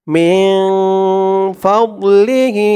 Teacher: নুন সাকিনের পরে ইকফার 15 হরফের এক হরফ ফা আসছে মিন নাকের ভেতরে লুকিয়ে গুন্না করে পড়তে হবে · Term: ইকফা গুন্নাহ